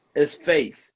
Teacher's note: When we say facey, you're adding one vowel that's called epenthetic vowel, which is an extra vowel in there.